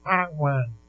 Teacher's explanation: Você vai sentir que na mesma hora o A passou a ser nasal. E além de dar esse som nasal pro A, dá para perceber que esse M virou um U.